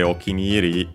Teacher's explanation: okiniri, the full expression is unaccented